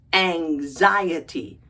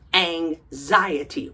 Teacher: Emphasis on the second syllable.